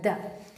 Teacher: तो द क्या होगा, दंत से भी रिलेटेड, स्पर्श भी हो रहा है दंत में, सघोष भी है और साथ ही साथ अल्प प्राण भी है। द ऐसे कर दे रहे हैं ना, द ऐसा नहीं है द, इतना तेज से नहीं कहना पड़ रहा है, द।